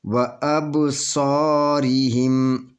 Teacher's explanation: اسی طرح یہاں پہ بھی یہ قلقلہ کا حروف ہے، یہاں پہ قلقلہ ہوگا، اس میں جنبش ہوگی با کے اوپر۔ وَأَبْصَارِهِمْ، یہ الف مدیہ ہے، الف کو 2 حرکت کے برابر کھینچ کر پڑھیں گے، اور صاد جائے یہ موٹا پڑھا جائے گا، پر پڑھا جائے گا۔